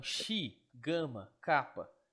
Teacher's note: E ki ou ri ou chi, mesmo se falar chi, ainda assim, mesmo se você fale chi, ainda assim vai ser um som gutural, porque você vai sentir esse movimento da garganta subindo